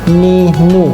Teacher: Dirasakan ya, ujung lidah ini ditempelkan ke langit-langit bagian depan. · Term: huruf nun